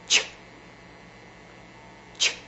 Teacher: Ch, Ch, unvoiced and staccato.